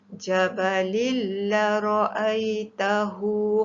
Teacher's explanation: Tanwin bertemu dengan lam, idgham bila gunnah.